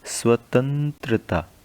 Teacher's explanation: आप जब तंत्रता बोलते हैं तो नाक से आवाज़ ज़्यादा आती है, इसलिए यहाँ पर बिंदु है और ये अनुस्वार वाला शब्द है, तो इसलिए हम यहाँ पर लिख लेते हैं अनुस्वार वाले शब्द में।